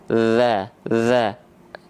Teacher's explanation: kalau dalal sifatnya jahr ya dia tidak mengalirkan hembusan angin cuman ngalir suara aja